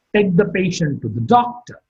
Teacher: Doctor is marked with a falling tone.